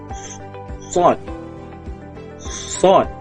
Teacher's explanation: Bunyi seolah-olah kita buat wisil. Sod, mulut muncung dan ada bunyi angin, sedikit angin.